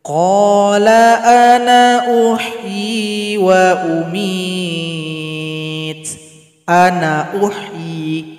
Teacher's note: Ketika lanjut nun dibaca pendek saja.